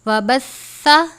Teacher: سا کے اوپر تشدید یعنی شد کی علامت ہے، تھوڑا سا سختی سے پڑھیں گے لیکن لمبا نہیں کرنا